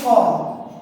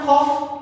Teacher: খ তাহলে ক সঙ্গে একটা হর উচ্চারণ আছে